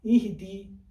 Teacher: دال کے نیچے زیر ہے، تھوڑا سا یا کی طرف جھکا دیجئے